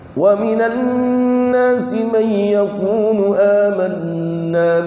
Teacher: Baca mayyakulu dengan bila guna, itu namanya qiraatnya riwayat Khalaf dari Imam Hamzah.